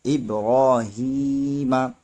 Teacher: زبر ما، ابراہیم، یہاں پر را پہ کھڑا زبر ہے اور را پہ کھڑا زبر ہو تب بھی را موٹا ہوتا ہے ، اس لیے یہاں پر را کو موٹا کریں گے. ابراہیم